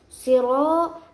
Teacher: ada ro yang berharokat fathah, maka hukum bacaannya tafkhim yaitu tebal